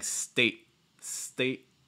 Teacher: a little bit and you're also shortening your vowel sound so basically when you make that glottal stop you're not letting the breath leave